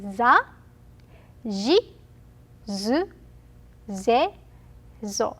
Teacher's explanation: S line, s sounds, becomes z when voiced.